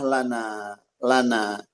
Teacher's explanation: hati-hati lo lo jangan sampai dibaca dengan tebal